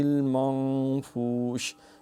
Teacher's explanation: منفوش شین میں تفشی ششکار ہو